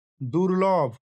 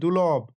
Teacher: দ্রুত উচ্চারণের ফলে যখন কোনো যুক্ত ব্যঞ্জনের একটি বর্ণ হারিয়ে যায়, তখন তাকে ধ্বনিলোপ বলে। উদাহরণ দুর্লভ থেকে হয়েছে দুলভ, এখানে র লোপ পেয়ে গেছে